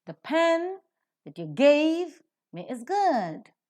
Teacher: Now in the entire sentence with so many words, pen, which is a noun, is accented. Gave, which is a verb, is accented. Good, which is an adjective, is accented. The rest are reduced to the respective weak forms.